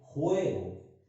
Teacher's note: La vocal en la que recae el acento sería la E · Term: vocal tónica